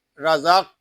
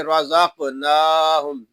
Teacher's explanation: قاف حروف قلقلہ میں سے بھی ہے، اس لیے یہاں اس میں قلقلہ بھی کریں گے،